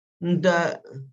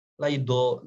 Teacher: kebanyakan kita mengucapkan huruf dal ini tempat keluarnya di mana? Di gusi.